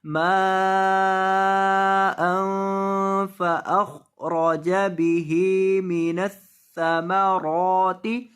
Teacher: خا کو اور را کو دونوں کو پر کریں گے